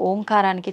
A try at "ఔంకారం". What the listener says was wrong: అది ఓంకారం కాదు, ఔంకారం. మనం పలకడమే దాన్ని తప్పు పలుకుతున్నాం. ఔం అని ఉచ్చరించినప్పుడు అకారము ఉకారము రెండూ పలకబడి మూకారం దీర్ఘమవుతుంది.